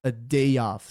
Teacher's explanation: perceba como que ele fala rápido o a, né? Não é tipo o a do português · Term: vogal schwa